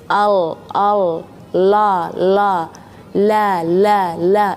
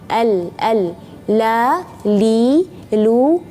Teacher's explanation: Kalau ada sifat inhiraf, yaitu miring lidah kita ke kanan sedikit atau ke kiri sedikit, maka itu yang kedengarannya lam yang tipis